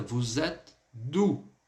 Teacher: Esse D da preposição, o Ezinho, ele caiu.